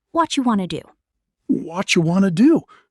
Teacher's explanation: in casual, fast speech, what do you turns into watcha or wataya, and want to becomes wanna.